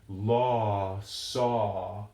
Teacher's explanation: Americans don't tend to round a great deal when we say our aw sounds, as in law, saw.